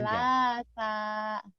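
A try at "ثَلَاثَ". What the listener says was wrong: Salah, lahnya panjang karena alifnya patah berdiri ganti alif.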